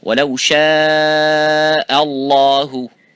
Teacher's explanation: Similarly, the last example, وَلَوْ شَاءَ اللَّهُ and ha, both of these letters, this hamza and the ha, have to be muraqqaq, which is empty mouth. So only the lafzul jalala have to be full mouth.